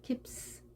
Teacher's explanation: 이때는 p가 소리가 떨림이 없습니다. 따라서 s도 떨리지 않게 강하게. 앞이 강하면 뒤에도 강하게, 앞이 약하면 뒤도 약하게 발음해주는 특징을 알면 되겠습니다.